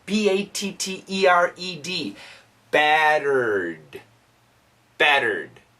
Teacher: Battered, kind of a quick, short D.